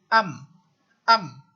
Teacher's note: bila kita matikan am, dia akan berhenti dekat bibir. So maksudnya mim ni adalah huruf yang makhrajnya terkeluar daripada asyafatan. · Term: huruf mim